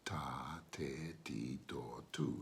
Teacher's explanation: Now again, it's not explosive. So it's a soft T.